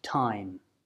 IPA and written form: taɪm (time)